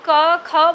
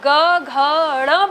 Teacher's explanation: जब आप क ख बोलते हो यानी पहला और दूसरा, तब उतना आपको वाइब्रेट नहीं लगता, लेकिन जब आप ग घ ड़ बोलते हो तो बहुत ज़्यादा झनकार हाथ में महसूस होती है